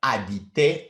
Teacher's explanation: habiter I pronounce without any h sound because it's not habiter, it's habiter. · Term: silent